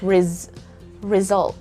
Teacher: the letter s there is not an s sound instead it's z